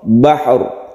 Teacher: karena ra ini sebelumnya ada fathah, maka dia dibaca tafkhim atau tebal. Bahr, jadi agak mencucu sedikit ketika kita setelah membaca sukun ha, kemudian timbullah sukun ra.